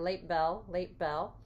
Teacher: we could do a little bit of a closure at the end of late